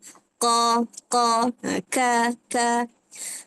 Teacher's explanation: makhraj yang berdekatanlah berhampiran iaitu dekat pangkal lidah. Ha pangkal lidah kat belakang. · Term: qaf dan kaf